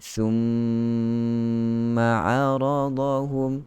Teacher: nun syaddah innaka dengan mim syaddah thumma itu sebenarnya gunnah dia lebih lagi daripada gunnah ikhfa. dia lebih sempurna daripada gunnah ikhfa hakiki. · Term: Wajibul gunnah